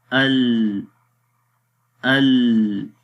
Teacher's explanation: لام کی آواز نہ تو مکمل مخرج میں بند ہو رہی تھی اور نہ ہی مکمل جاری ہو رہی تھی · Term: توسط